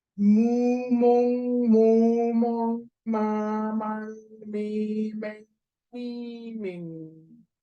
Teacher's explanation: Da tönt ihr die Vokale und das U fängt ganz hinten im Rachen an und dann geht das immer weiter nach vorne